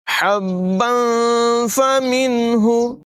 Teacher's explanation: تنوین کے بعد فا حروف اخفا میں سے ہے، یہاں پر اخفا کریں گے، غنہ کر کے پڑھیں گے